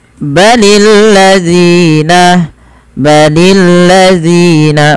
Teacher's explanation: panjangkan zi sepanjang dua harakat karena dia ada mad thabi'i